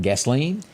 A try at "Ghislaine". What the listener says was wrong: Well, I think I've heard people calling her Ghislaine. Just Ghislaine. the S is silent.